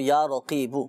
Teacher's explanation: نقطوں والا قاف ہے نا، اس کو پر پڑھا جائے گا، موٹا پڑھیں گے اس کو